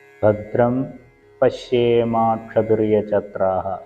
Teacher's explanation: മ എന്നുള്ള ശബ്ദം കഴിഞ്ഞ് പ വരുന്നതുകൊണ്ട് അവിടെ പവർഗ്ഗത്തിന്റെ അനുനാസികമായിട്ടുള്ള മ തന്നെയായിരിക്കും